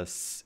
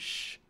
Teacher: If you feel a s and sh, you can feel there's a difference in how forward you are. S as in sip is on the alveolar ridge, while sh as in ship is a little bit behind it.